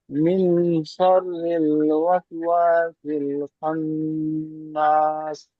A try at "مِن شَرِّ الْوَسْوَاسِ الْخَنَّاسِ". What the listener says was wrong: হ্যাঁ, নুনটা যেমন গুণনা হবে, ব্যাস এই নুনটা ভালো করে গুণনা করেন, আপনার গুণনা হয়নি একালি পরিমাণ। এখানে এই নুনটাও একালি পরিমাণ গুণনা হয়নি, শেষে গিয়ে মাদ্দা আরজি ওয়াকফি হওয়ার কারণে 3 থেকে 4 আলি পরিমাণ টান দিয়ে পড়তে হবে। মিন শাররিল ওয়াসওয়াসিল খান্নাস। মিনটা কেন গুণনা করছেন না,